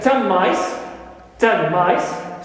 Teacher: in 10 the sound n is influenced completely by the M after it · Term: total assimilation